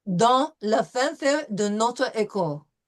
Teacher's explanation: there's no S sound on dans